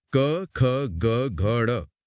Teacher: इन्हें बोलते समय हवा को बिल्कुल पीछे गले यानी कंच पर रोका जाता है। अब बोल कर देखें आवाज गले से आ रही है। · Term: क वर्ग